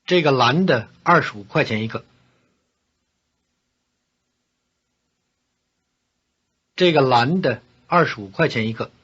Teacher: Notice that the word for one, 一个, is stressed here with a falling tone on the second syllable.